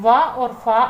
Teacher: वा और फा आपके दंत और ओष्ठ की सहायता से बोले जाते हैं इसलिए इनको दंत्योष्ठीय कहते हैं।